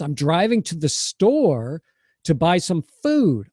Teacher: I'm reducing those words, but I'm going to stress store and food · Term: stress content words